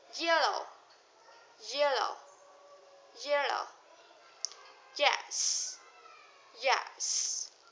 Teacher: To make this sound begin, you need to make the sound E, but very quickly you move your tongue, and you can see the jaw drop